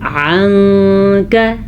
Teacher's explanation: نون کو کسی حد تک چھپانا ہے، کسی حد تک غنہ کرنا ہے، ناک میں آواز جائے گی کیونکہ نون ساکن کے بعد کاف حروف اخفا میں سے ہے، تو اس لیے یہاں پہ اخفا کا قاعدہ ہو رہا ہے۔